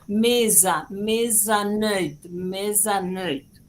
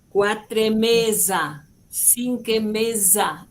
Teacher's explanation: esa S suave, sibilante, que es totalmente diferente a la que usamos en el castellano